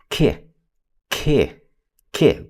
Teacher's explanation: Can't really stretch the k out, but we can stretch out that I if we want